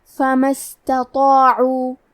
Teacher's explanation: تا کو پتلی آواز میں پڑھنا ہے، لیکن طو حروف تفخیم میں سے ہے، تو ہم طو کو اور اس کے بعد مد الف کو بھی بھاری آواز میں پڑھیں گے